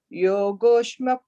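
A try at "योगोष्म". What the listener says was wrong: Yeah, and then the yogo again, the is the yogoshma. I think I felt like you said an extra ish there. It's yogoshma.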